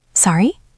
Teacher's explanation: It is short and effective with a rising intonation.